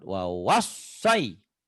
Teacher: Dari waw kedua nyamber ke sod. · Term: tasdid